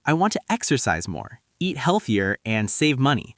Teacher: when you're listing multiple goals, your intonation should rise slightly after each one except the last.